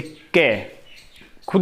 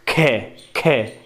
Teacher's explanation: कै, कै बहुत कम वायु निकलती है। खे, खे, जब खे बोलेंगे तो आपके हाथ से वायु टकराएगी। खे, गे, गे में नहीं टकरा रही है।